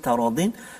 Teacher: nun mati bertemu dengan ta, ikhfa hakiki juga, kita dengung dua harakat